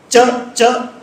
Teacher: च में जीभ का बीच वाला हिस्सा ऊपर तालु से जुड़ा और फिर मूर्धा से जुड़ा।